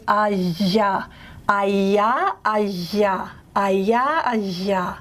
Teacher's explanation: Instead of it being an approximant semivowel, you end up with a fricative